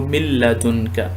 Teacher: ہماری سب سے پہلی مثال یہ ہے، نون ساکنہ کے بعد لام آ جائے گا تو من لدنک، اور ناک سے آواز بالکل نہیں نکالیں گے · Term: بغیر غنّے کے ادغام